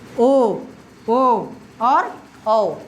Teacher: कंठस्थ कहने का मतलब है जिनका उच्चारण कंठ और ओष्ठ यानी ओठ से। कंठ से भी और ओष्ठ से भी हो वे क्या कहलाते हैं? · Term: कंठस्थ्य वर्ण